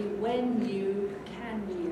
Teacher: You can't say in English, when do you go, or can you go. It's got to be when you, can you, with a y sound, not a j sound.